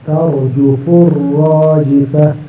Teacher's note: را پر زبر ہے، را کو موٹا کرنا